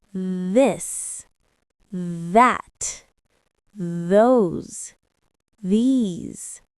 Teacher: your tongue touch your teeth lightly but use your voice